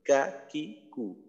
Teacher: জিওভার গোড়া হইতে একটু আগে বাড়াইয়া তার বরাবর উপরের তালুর সঙ্গে লাগাইয়া মধ্যখান পেঁচানো কাফ। তো কাফের মাখরাজ আমাদের জন্য সহজই হবে, কারণ বাংলায় ক, খ, গ এই বর্ণগুলো উচ্চারণের জন্য যে অংশের ব্যবহার করি কাফের ক্ষেত্রে ওই অংশটাই ব্যবহার করতে হবে, কা, কি, কু ওইটাই।